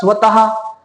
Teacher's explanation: मग आता याचे उदाहरण बघा, स्वतः. आता हा उच्चार करत असताना ह या वर्णाला हिसडा बसलेला आहे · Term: विसर्ग